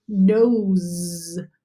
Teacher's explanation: This S is going to sound like a Z, but you're not going to get mixed up. So in the word nose, do you hear that S actually sounds like a Z? Because it's sandwiched in between two vowels. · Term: z sound